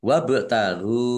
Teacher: bak sukun, bacaan kolkolah, dibaca memantul, ditampakkan pantulannya